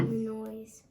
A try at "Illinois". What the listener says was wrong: Illinois. You don't say the S. Yeah, I don't know why, but you don't.